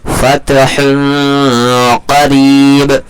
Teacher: فتح قریب، تنوین کے بعد حروف اخفا کے 15 حرفوں میں سے قاف آ رہا ہے. نون کی آواز کو ناک میں چھپا کر کے پڑھیں گے، تھوڑا سا کھینچ کر کے، جیسے فتح قریب.